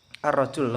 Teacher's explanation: huruf lam pada ar-rajul diganti dalam pengucapannya dengan huruf ro langsung ya, tidak ada al, akan tetapi langsung masuk kepada huruf ro